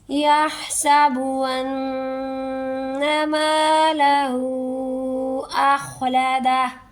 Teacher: انا پر تشدید ہے اور نیکسٹ ورڈ میم ہے، یہاں پر اخفا ہوگا، ٹھیک ہے، ناک میں لے جا کر گنہ ہوگا، ناک کے باندھ سے میں لے جا کر آواز کچھ ٹائم ہم ایک الف کے برابر تقریباً روک کے رکھیں گے، پھر نیکسٹ ورڈ پڑھیں گے یحسب ان مالہ اخلدہ۔